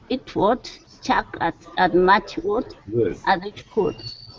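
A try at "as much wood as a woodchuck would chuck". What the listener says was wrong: that was much better all right so yeah just remember to really practice that making sure that w is really noticeable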